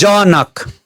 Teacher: जनक जमा अलि बढी बल पर्छ पहिलो सिलेबलमा बढी बल पर्छ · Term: बलाघात